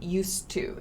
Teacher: this d sound is very very short and soft